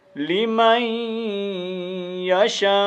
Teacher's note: نون ساکن کے بعد یا نون تنوین کے بعد جب یا آ جائے تو پھر کیا ہوتا ہے، ادغام مع الغنہ ہوتا ہے، یعنی نون کی آواز کو ہم نہیں پڑھیں گے، ادغام کریں گے اور ساتھ غنہ بھی کریں گے